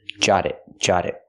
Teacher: We hear the T in jot change to a fast D because now it's between vowels.